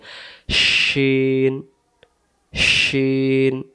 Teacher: তাহলে সিন অক্ষরের উপরে 3টি নুক্তা থাকলে তার নাম শিন। শিন জিহ্বাটার মাঝখান থেকে ভেসে আসবে